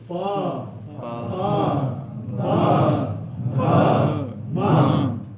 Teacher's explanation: उकार, पवर्ग और उच्चारण स्थान ओष्ठ है। इनका दोनों ओष्ठ से उच्चारण करना चाहिए।